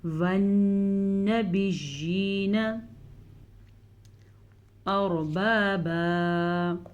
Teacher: را ساکن سے پیچھے والے حرف پہ زبر ہے تو را کو پر پڑھیں گے۔